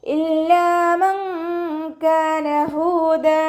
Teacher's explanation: ലാമിന് ശ്രദ്ധ വന്നിട്ടുണ്ട്, 2 അക്ഷരങ്ങൾ ഉച്ചരിക്കുന്ന കനം കൊടുക്കണം, പക്ഷെ മണിക്കാതെ ഉച്ചരിക്കാൻ ശ്രദ്ധിക്കുക · നൂൻ സാക്കിനയെ മറച്ചു വെച്ചിട്ട് മണിച്ചോതി കൊടുക്കുക. നൂറിൻ്റെ സൗണ്ടിനെ വ്യക്തമായിട്ട് കേൾപ്പിക്കാതെ ഹൈഡ് ചെയ്യുക, അതോടൊപ്പം തന്നെ മണിക്കും ചെയ്യുക കേട്ടോ. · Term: ഇഖ്ഫാൻ്റെ